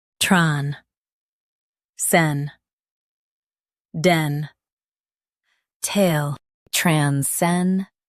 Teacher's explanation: Focus on den and keep tul light.